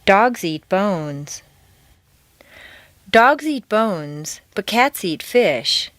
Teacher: Notice that the intonation stays on the nouns. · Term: phrasing